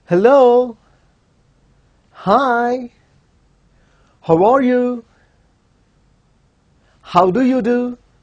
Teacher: all these are greetings where the tune is rising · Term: rising tune